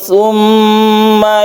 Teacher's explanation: ada tasdid mim yang kita sebut dengan gunah musyaddadah gunah artinya berdengung musyaddadah artinya bertasydid